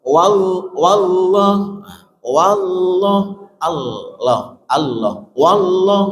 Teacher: Kalau wallah itu ujung lidahnya enggak nempel